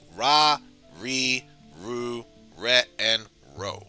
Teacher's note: when pronouncing r syllables in japanese the sound tends to be between the english r and l sound it's not quite different from r it's not quite an r